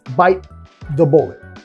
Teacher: no estamos pronunciando la T por completa. No es bite, bite, tu lengua acá.